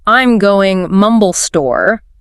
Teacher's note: The heavy beats give you all the crucial data going and store.